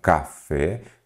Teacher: você observa que a sílaba tônica é o fé e neste caso eu tenho uma palavra oxítona.